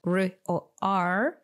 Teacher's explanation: When you pronounce the sound R or R, your tongue or the tip of the tongue doesn't touch anything. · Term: R sound